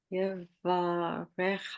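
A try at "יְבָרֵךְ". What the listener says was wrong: No, just Yevarech. See, you've got a silent vowel in that. it's eh. really, I'm going to say this is the only, not really, but there are two final letters that can actually take vowels, and that's what you're seeing.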